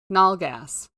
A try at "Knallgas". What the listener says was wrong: What's the spelling? KNA. You pronounce in German. You pronounce the K.